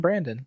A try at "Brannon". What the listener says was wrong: Nobody gets the D unless I say they get the D.